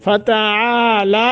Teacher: ایک ایک الف کے برابر مد کرنی ہے